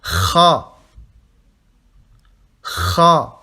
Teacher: Vous sortez de l'air, mais en rugissant.